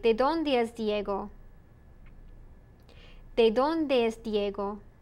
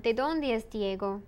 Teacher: You notice the intonation goes down.